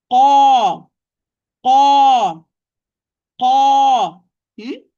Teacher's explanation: So the shape of the tongue, the back of the tongue will be higher, and there is a curvature, or the tongue will be curved in the middle. Because by this way, that sound will rise to the roof of the palate, or the roof of the mouth.